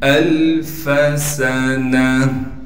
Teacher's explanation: फा को बगैर खींचे पढ़ना है। सीन में सीटी अदा करके पढ़ेंगे। नून को बगैर खींचे पढ़ेंगे।